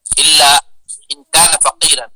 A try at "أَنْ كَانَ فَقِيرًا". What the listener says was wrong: ان كان فقيرا بفتح الهمزة، ان كان فقيرا